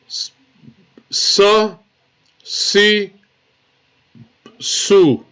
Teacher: Now remember how we read the letter sin is going to be with a small whistle sound. So you should read the letter sin with a small whistle sound.